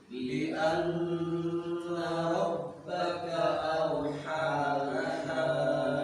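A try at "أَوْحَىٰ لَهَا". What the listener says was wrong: Farqu baina ha dengan ha. Haw awhalaha. Ya, keduanya pakai ha besar. Ulang.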